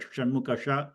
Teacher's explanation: The Saraswati sa is simple sa, and the Shanmukha, which is a Murdhanya, where you get a little bit of a whistling kind of a sound. When you normally pronounce that Shanmukha sha, you get a little bit of a whistling kind of sound because your tongue is rolling upwards.